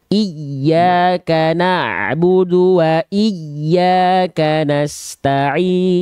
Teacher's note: Ya tasdidnya dia cara bacanya naber. Naber itu ada penekanan yang lebih kuat pada huruf ya bertasdid sehingga nadanya seolah lebih tinggi dibanding nada yang lain.